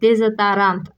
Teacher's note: Əgər o saiti vurğu qəbul etmirsə, o zaman o saiti A kimi tələffüz olunacaq. Burada da dezodorant sözündə də o saiti vurğu qəbul etmədiyinə görə A kimi tələffüz olunub. · Bu sözdə vurğu sona düşür. Onun A kimi tələffüz olmasına səbəb isə, əgər o saiti vurğu qəbul edirsə, tələffüz zamanı həmin söz elə o ilə də tələffüz ediləcək.